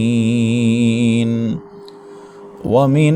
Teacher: واو متحرک ہے، ہونٹوں کو گول کر کے اس کو ادا کریں گے، اور واو کے اوپر پڑی حرکت میں زبر ہے تو اس کو لمبا نہیں کرنا۔